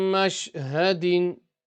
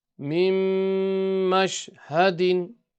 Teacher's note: we're not going to stretch the ha because it's only a harakat